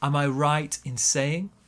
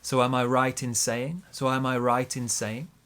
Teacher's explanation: Big stress on right, smaller stress on saying.